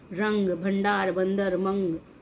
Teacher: अनुस्वार। तो इनका उच्चारण नाक से होता है।